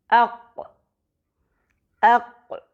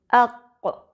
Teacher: یہی نرم حصہ قوف کا مخرج ہے، یعنی زبان کا پچھلا حصہ اور تالو کا نرم حصہ جب آپس میں ملتے ہیں تو جو آواز نکلتی ہے وہ قوف کی آواز ہوگی۔ قوف کے لیے زبان کے پچھلے حصے کو اٹھا کر تالو کے نرم حصے سے لگایا جاتا ہے۔ قوف کا مخرج چیک کرنے کے لیے قوف کو سکون دے کر اس سے پہلے حمزہ لگا کر اس کو فتحہ کے ساتھ پڑھیے، اق اق، اور قوف کے مخرج کو اپنے منہ میں محسوس کیجیے، اق۔